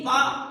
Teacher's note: पा को आप बिना होठ के मिलाए उच्चारण कर ही नहीं सकते। पा में जितने भी वर्ण आते हैं इनको आप बिना किसी भी प्रकार के होठों को बिना मिलाए आप नहीं बोल सकते, इसीलिए इनका नाम होस्ट में आता है।